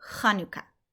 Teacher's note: The chaf has a cold, and we can say that because the chaf makes a ch sound, which kind of sounds a little bit like there's a little bit of gunk in your throat